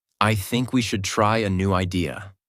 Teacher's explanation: Voice goes down at the end. This is called falling intonation